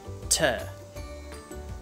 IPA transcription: tə